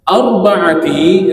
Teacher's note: ra sukun sebelum baris atas kena tebal. Bacaannya tafkhim. Nama dia bacaan taf tafkhim.